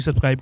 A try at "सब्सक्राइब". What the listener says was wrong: सब्सक्राइब नहीं सब्सक्राइब क्राइब नहीं ट्राइब नहीं क्राइब सब्सक्राइब ट्राइब नहीं सब्सक्राइब